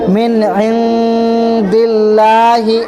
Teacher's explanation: لفظ اللہ کے لام سے پہلے زیر آ رہا ہے، اس لیے لفظ اللہ کے لام کو باریک پڑھیں گے